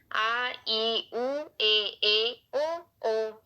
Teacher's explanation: ये वे स्वर हैं जिनके उच्चारण में ह्रस्व स्वर से लगभग दुगुना समय लगता है। आ ई उ ए ओ ये संख्या में 7 है। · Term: दीर्घ स्वर